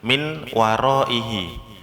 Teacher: Kemudian yang ketiga itu yang sedikit gampang, nun sukun bertemu wawu. Nunnya ngalah jadi wawu dulu. Dengungnya baru di akhir.